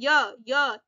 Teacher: या का उच्चारण य तालव्य, तालु के पास से बोला जा रहा है, तालव्य हो जाएगा।